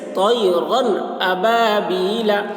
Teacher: جیسے طیرن ابابیل، اب دیکھیے را کے اوپر 2 زبر کی تنوین ہے، اس تنوین کے بعد یہ حمزہ آ رہا ہے، الف ہے، الف کے اوپر زبر ہے تو یہ حمزہ ہو گیا، اور یہ حروف حلقی میں سے ہے، تو یہاں پر اظہار ہوگا۔ را کے اوپر جو تنوین ہے اس کو ظاہر کر کے پڑھیں گے بلا غنہ کے